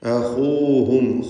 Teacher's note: ലഹും അഖൂഹും സാലിഹ്, രണ്ട് സാക്കിനത്തായ മീം ആവർത്തിക്കുന്നു, രണ്ടും ഇൽഹാർ ഷഫവിയാണ്, മണിക്കാതെ വെളിവാക്കണം. അഖൂഹും, ഖാഇന് നിസ്ബിയ തഫ്ഖീം കൊടുക്കണം